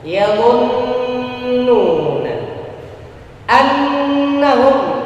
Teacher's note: Sekaligus juga dengungnya, sebab nun musyaddadah gunnah ini tempat keluar suaranya adalah di khaysyum, pangkal hidung